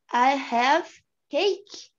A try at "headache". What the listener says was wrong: Headache. Headache. ache sozinho não funciona. Você tem que falar head. Head ache.